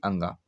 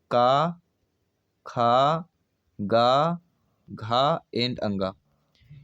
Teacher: का होता है अल्पप्राण, खा होता है महाप्राण, गा होता है अल्पप्राण, घा होता है महाप्राण, अंगा होता है अल्पप्राण